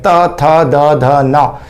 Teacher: इसमें जीभ जो है वो दांतों के पिछले हिस्से पर टच होती है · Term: दंतव्य